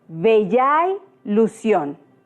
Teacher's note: la segunda vocal de la primera palabra, ya, se une con la primera vocal de la segunda palabra y al pronunciarla suena yay. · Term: sinalefa